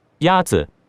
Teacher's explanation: The first tone is a high, level tone.